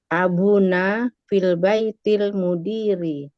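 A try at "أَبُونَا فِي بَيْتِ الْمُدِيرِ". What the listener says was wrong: Fi gitu. Fi panjang. Fi.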